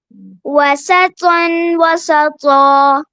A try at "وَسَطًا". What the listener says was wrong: سون نہیں، سانس والی ساؤنڈ نہیں آنی چاہیے. پن یہ ساؤنڈ ہونی چاہیے. آپ کا ہو رہا ہے وسطن، ایسا نہیں ہونا چاہیے. وسطن وسطا.